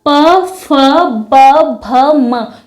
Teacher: जब हम इन प वर्ग के वर्णों का उच्चारण करते हैं तो हमारे होठ आपस में स्पर्श करते हैं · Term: ओष वर्ग